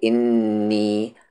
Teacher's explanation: نون پر تشدید ہے، غنہ کریں گے